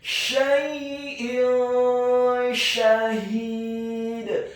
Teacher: hukum bacaannya adalah ikhfa, dibaca secara samar-samar